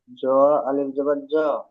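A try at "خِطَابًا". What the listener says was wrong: জ নয়, ত, আলিফ জবর ত, খিতা নয়, খিত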